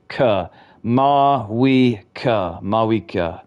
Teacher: Ma as in flaw, we as in weak. Ka, a soft schwa sound at the end. Ka.